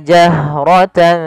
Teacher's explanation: Pada lafal jahrata alirkan nafas pada lafal ha karena dia punya sifat namanya hamas, mengalirnya nafas.